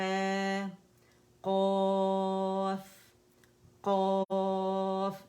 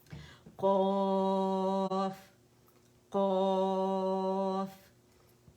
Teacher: نرم تالو کی طرف آپ نے اٹھانی ہے زبان کی جڑ